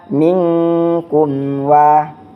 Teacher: Nah, selanjutnya itu terdapat pada minkum wa. Mim mati bertemu dengan wa, sama kayak tadi hukumnya adalah izhar syafawi. Jadi jelas di bibir. Apabila ada mim mati bertemu dengan seluruh huruf hijaiyah kecuali mim dan ba, maka hukumnya adalah izhar syafawi.